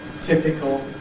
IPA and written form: ˈtɪpɪkl (typical)